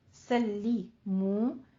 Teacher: منہ، یہاں پہ لام کی آواز پہ آپ نبر کریں گے، تشدید ادا کرنی ہے لیکن آپ نے لام کو باریک رکھنا ہے